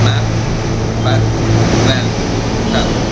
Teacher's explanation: This is a front vowel with a short sound